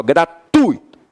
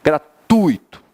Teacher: O I quase não aparece, né? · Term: ditongo decrescente